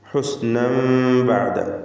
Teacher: തൻവീനിനെ ഇഖ്ലാബ് ചെയ്ത് മീമാക്കി മാറ്റി മണിക്കണം. ഫലത്തിൽ ഇഖ്ഫാ ശഫവി എന്ന സാക്കിനത്തായ മീമിൻ്റെ ഹുക്മ നൽകി.